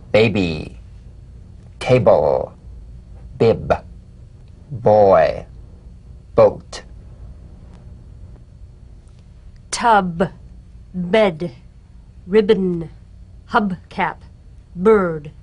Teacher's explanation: the springing away from contact not by pressing the lips together you'll feel a gentle voiced pulsation on the lips